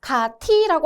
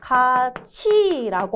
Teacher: 가티라고 하지 않고 가치라고 하죠. 그래서 받침에 있는 티읒이 뒤에 이를 만나면 치읒으로 변한다